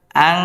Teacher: গুন্না করে পড়তে হবে, নাকের ভিতর লুকে